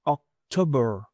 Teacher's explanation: Prácticamente el schwa hace que la R suene sin la A.